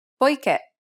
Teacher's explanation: As indicated by the accent, the last syllable should be stressed.